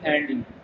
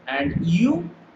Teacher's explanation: Notice the rising tone, rising intonation on and you. So when you say and you, just don't say flatly and you.